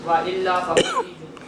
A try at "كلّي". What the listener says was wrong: کلی نہیں، لام مشدد ہے۔